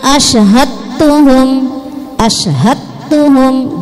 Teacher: dnya hilang masuk ke huruf ta namanya idgham mutajanisain karena satu jenis dal ad at ad ad at keluar hurufnya sama makhrajnya sama · Dal ad keluar hurufnya sama, makhrajnya sama, jadi dalnya hilang masuk ke huruf ta